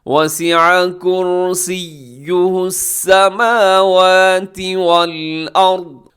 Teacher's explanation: دی وسیع، وسیع یہاں بھی عین کا خیال رکھیے گا. کرسی میں را موٹا پڑھا جائے گا اور سیہ میں یا مضبوطی کے ساتھ پڑھا جائے گا